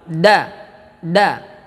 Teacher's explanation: Terletak ujung lidah menempel pada pangkal gigi seri atas kita. Da menyentuh gigi seri atas bagian pangkal. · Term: huruf da